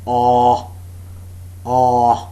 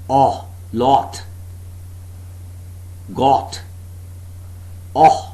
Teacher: The back of the tongue is just below the half-open position. No contact being made between the tongue and the upper molars. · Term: monophthong oh